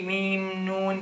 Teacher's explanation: what do mim and noon both share? Nasalization. So they share a nasalization.